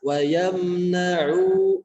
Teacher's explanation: mimnya jangan dipantulkan karena di sana termasuk izhar syafawi, mimnya nampak jelas. Wa yamna'u, kemudian ainnya jangan dengung.